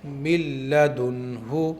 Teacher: جیسے یہاں پر نون ساکن آ گیا ہے پہلی شرط میں سے اور نون ساکن کے فوراً بعد میں لام آ گیا ہے، لیکن یہ لام ان 6 حرفوں میں کے را اور لام میں سے آیا ہے، تو یہاں پر نون اور لام کو اس طرح سے ملائیں گے کہ نون فل سائلنٹ ہوگا، نون کے غنے کی بھی آواز باقی نہیں رہے گی۔ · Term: ادغام بلا غنہ